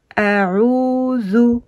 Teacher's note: on a le waw qui présente une prolongation ici du Ain